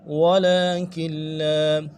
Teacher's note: مفسدون ولكن لا، ولكن لا، لام کے اوپر کھڑا زبر ہے، کھینچیں گے ایک الف دار میں، اور کاف کو لام کے ساتھ، اگلی لام کے ساتھ ملائیں گے، تشدید ہے، نون نہیں پڑا جائے گا